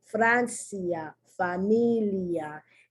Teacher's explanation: the i is pronounced more like a y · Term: weak vowel